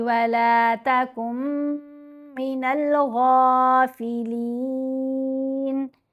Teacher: نون پر غنہ کریں گے